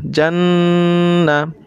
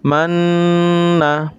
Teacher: হয় ইহাকে ওয়াজিব গুন্নাহ বলে তো নুন এবং মিম হরকতের বামে নুন এবং মিমে যদি তাসদিদ থাকে তাহলে এটা স্বাভাবিক তাসদিদের মত পড়া যাবে না এটা অবশ্যই গুন্নাহ করে পড়তে হবে · নুনে বা মিমে যদি তাসদিদ হয় তাহলে গুন্নাহ করিয়া পড়িতে হয় ইহাকে ওয়াজিব গুন্নাহ বলে